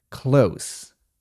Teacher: Jednak wymowa słowa blisko, close jest nieco inna. Tam mamy końcówkę bezdźwięczną.